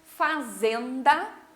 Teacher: o zen, a gente fala um pouquinho mais forte